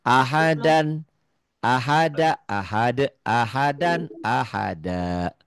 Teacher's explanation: Dua fatah, dua dibaca satu karena berhenti membacanya. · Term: mad iwad